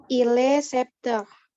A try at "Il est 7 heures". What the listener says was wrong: Les 7 heures. P-nya tidak dilafalkan ya. Angka 7 P-nya tidak dilafalkan, yang berbunyi T-nya saja. Jadi set ya.